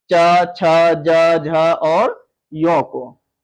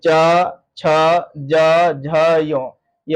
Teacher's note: तालु से उच्चारित होने वाला च वर्ग